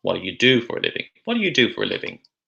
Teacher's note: for the first one, we have the weak, unstretched sound, d, d, d, followed by the strong form of the word, do.